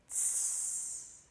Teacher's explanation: T ends a word, and sometimes when it's in the middle of a word, then rather than having a plosive T sound, Plosive. a Scouser might make it fricative, which means it vibrates like this. Tss. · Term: fricative T